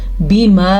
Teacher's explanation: ये जो मद आपको नज़र आ रही है इसको ज़रूर अदा करना है। इस मद को तकरीबन 3 अलिफ के बराबर पढ़ते हैं,